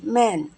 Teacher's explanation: এবং এম এর ফোনিক সাউন্ড হলো মানে এটা উচ্চারণ করতে গেলে আমাদের দুই ঠোঁট লেগে যাবে একসাথে